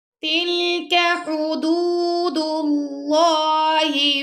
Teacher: اللہ کے لام سے پہلے آ گیا پیش تو یہاں پہ آپ اللہ کے لام کو موٹا پڑھیں گے